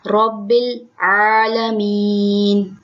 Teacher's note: رو پہ زبر ہے، رو کو پر پڑھیں گے، موٹا پڑھیں گے، رب العالمین، عین کو اس کے مخرج سے ادا کریں گے، عین کو ذرا زور لگا کے حلق سے نکالتے ہیں، عالمین۔